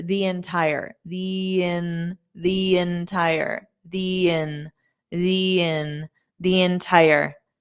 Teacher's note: you can pronounce it as the long vowel, the, because we have a vowel sound for the next word, entire